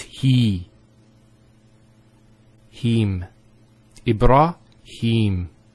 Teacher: so here is the elongation of the e sound